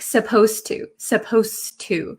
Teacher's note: the D sound and the T sound become kind of like one sound